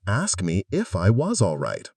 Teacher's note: Asked me often becomes ask me. The t sound can get dropped.